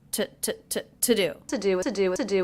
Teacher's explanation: I notice with the word to, I am reducing that to the schwa sound. It's not to do, it's to do.